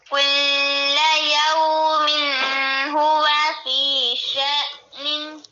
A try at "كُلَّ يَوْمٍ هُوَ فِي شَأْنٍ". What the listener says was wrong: اب کل پہ ادھر تو کوئی غنہ شنہ نہیں ہوتا، آپ نے دیر کی ہے. اسی طرح یومن پہ بھی نہیں ہوتا.